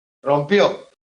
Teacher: aguda porque el golpe de voz cae en la última